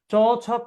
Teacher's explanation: চ ছ পড়েন, চ ছ জিব্রাটা তালুর সাথে বাড়ি খাচ্ছে, এই জন্য এটার নাম তালব্য ধ্বনি